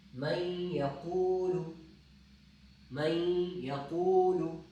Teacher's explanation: ہم غنہ پڑھتے وقت بھی نون کی آواز علیحدہ نہیں کریں گے